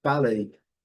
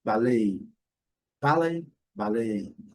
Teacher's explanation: no inglês britânico, a sílaba forte é a primeira. No inglês americano, a sílaba forte é a segunda. Então, sem delongas, ballet.